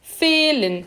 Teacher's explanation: Atenção, ele é um E mesmo. Ele é fechado e longo.